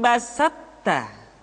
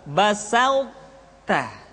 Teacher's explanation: Sifat itbaq yang dimiliki oleh huruf to masih tetap ada, sehingga ketika mengucapkan to bertemu dengan ta terdengar suara yang menebal